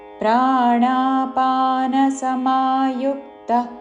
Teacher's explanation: యు మీద ఆఘాత విసర్గ ఉచ్చారణ పక్కన పో పదం మొదలవుతున్నది కాబట్టి శ్వాస వదులుతూ చివరిన ప లాగా ఉచ్చారణ